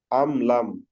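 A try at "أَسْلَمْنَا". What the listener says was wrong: হ্যাঁ হ্যাঁ, এখন ঠিক আছে, মাশাআল্লাহ।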